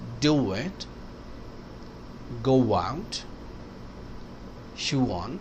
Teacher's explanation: او کی وجہ سے اور وال آئے گا تو بیچ میں انٹروژن ڈبلیو آئے گا